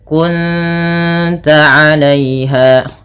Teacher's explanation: Cara membacanya bukan kunta tapi menyamarkan bunyi suara nun kepada ta dan ditahan bunyi dengungannya 2 harakat. Kunta bukan kunta, nanti berbeda bunyinya. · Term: ikhfa hakiki